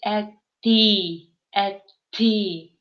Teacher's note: Несмотря на то, что и она является мягкой гласной, но вот когда рядом с ней приходит т, д, н, они все равно говорятся как-то твердо. Ну, более так, грубовато немножко.